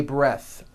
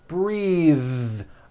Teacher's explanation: breath is a noun take a breath unvoiced but when you change it into a verb the vowel changes and it becomes breathe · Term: voiced th